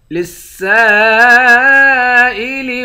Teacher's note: سین کے بعد الف ہے، اس الف پر مد ہے، اس مد کو 5 الف کے مقدار کھینچ کر پڑھیں گے